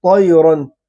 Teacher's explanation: وَأَرْسَلَ عَلَيْهِمْ طَيْرًا، طا پر ہے، حروف مستعلیہ میں سے ہے، یا کو ادا کرتے وقت ناک میں آواز نہیں جائے گی